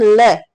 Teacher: हमारी जीभ है वो दांतों से स्पर्श करती है